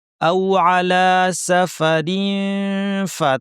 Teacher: রিন তানওয়িন আছে, অর্থাৎ নুন সাকিন। ফা, দাঁতকে ঠোঁটের উপর এনে ফা বলার জন্য রেডি করে পুরোপুরি চাপ দিব না, নাক থেকে গুণনা করব। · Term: ইখফা